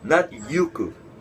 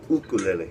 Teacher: Because in Hawaiian, the letter U is with pronounced u. Well, it has the okina in front of it. Yeah. So it's a glottal stop.